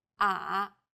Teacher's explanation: the third tone goes down from a low pitch then Rises to the middle of the pitch range